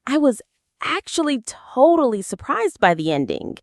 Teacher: The pitch of your voice would go up on totally to show how surprised you were.